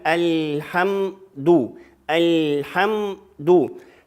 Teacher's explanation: Значит, аля разделять нельзя. Значит, лам, кончик языка оставляем, где образуется буква лам, потом переходим на букву ха, потом губы закрываем